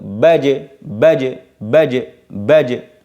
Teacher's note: Jadi, baje itu jim mantul, baje. Jadi lisan mantul ke ke makhraj.